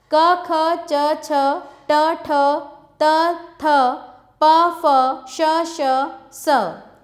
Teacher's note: जिस वर्ण के उच्चारण में स्वर यंत्रिका में कंपन नहीं होता है उसे अघोष वर्ण कहते हैं। क, ख, च, छ, ट, ठ, त, थ, प, फ, श, स 13।